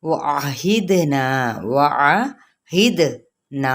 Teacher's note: دال پہ قلقلہ اور نا کو چار حرکات کے برابر کھینچیں گے